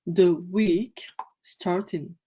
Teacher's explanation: TH, et comme c'est c'est un E renversé ici, et comme le mot qui suit de est une consonne, donc ça se prononce de et non pas di